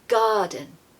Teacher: a vowel so of course the r is completely missing here I really just want you to master that long stretched a · we don't usually pronounce the r when it comes after a vowel so of course the r is completely missing here I really